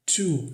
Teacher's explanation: O T aqui entre vogais também tem o som de r.